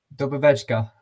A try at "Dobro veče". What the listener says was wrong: No, not večka.